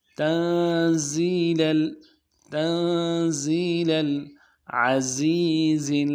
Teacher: نون ساکن ہے غنہ کریں گے اور زا کو بھی واضح کریں گے. تنزیل العزیز عزیز پڑھتے ہیں، عزیز نہیں پڑھنا چاہیے.